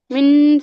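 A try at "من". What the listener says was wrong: मिन नहीं, गुन्ना गुन्ना हाँ देखिए, जो साउंड दो तरीके से है। एक तो जो साउंड होता है, जो उसका जो तलफ्फुज होता है वो होता है होंठ से, जो मुंह से होता है। और जो गुन्ना होता है वो नोज से होना चाहिए।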